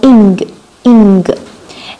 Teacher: Now we use our back of our tongue and touch the soft palate. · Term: velar sound